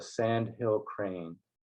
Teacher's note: the word sandhill is a trochee where the first syllable is accented and then the second one is unaccented